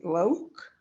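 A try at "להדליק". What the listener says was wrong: there is no O here at all. No O, no O whatsoever. Nope, lehad, leak.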